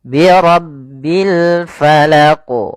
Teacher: Maka dalam membaca al-qalqalah huruf qafnya harus kita pantulkan.